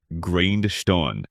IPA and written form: ˈɡraɪnd.stəʊn (Grindstone)